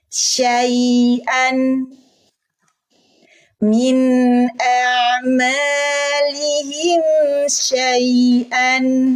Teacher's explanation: Kita belum belajar wakof, masih dibunyikan dengan jelas. Hamzanya fathatain, ada suara en, alifnya belum terbaca.